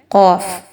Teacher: یاد رکھیے اس کی ادائیگی موٹے انداز میں کی جائے گی۔ قاف حروف مستعلیہ میں سے ہے اور اسے 4 سے 5 حرکت کے برابر لمبا کر کے پڑھنا ہے